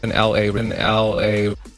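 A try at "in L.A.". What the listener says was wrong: the L and A could have been linked together to pronounce the LA sound. So the A should have been pronounced more like a lay. LA sound.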